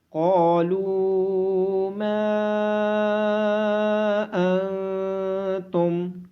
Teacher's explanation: قاف کو موٹی آواز کے ساتھ پڑھا جائے گا۔ نون ساکن کے بعد حروف اخفا میں سے تا ہونے کی وجہ سے نون پہ اخفا ہوگا · قاف کے بعد الف مدہ، لام کے بعد واو مدہ، میم کے بعد الف مدہ اور مد ہونے کی وجہ سے ان تمام کو لمبا کیا جائے گا۔ قاف کو موٹی آواز کے ساتھ پڑھا جائے گا۔